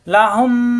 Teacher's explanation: দুই ঠোঁটের ভিজা অংশ থেকে গুণ্য হবে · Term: গুণ্না